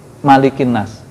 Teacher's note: Kalau Anas itu ma-nya pendek.